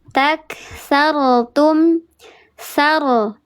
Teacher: Dibacanya tebal. diangkat pangkal lidahnya dikeraskan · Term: ro tafkhim